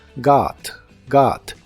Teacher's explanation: la o de esta palabra se pronuncia como una a profunda